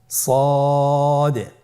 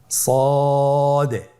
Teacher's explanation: জিহ্বার আগা, সামনের নিচের 2 দাঁতের পেট ও আগার সঙ্গে লাগিয়ে উচ্চারিত হয়।